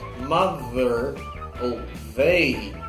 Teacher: se você fala mother ou they, você sente a vibração.